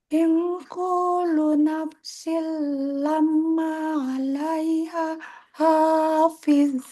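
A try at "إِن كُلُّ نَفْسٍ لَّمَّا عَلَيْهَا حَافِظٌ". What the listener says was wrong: Ing kullu. Lu-nya ditekan, Bu. Lamnya. Kullu.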